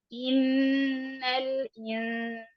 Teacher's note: نون مشدد ہے، اس پہ ہم 2 حرکات کے برابر غنہ کریں گے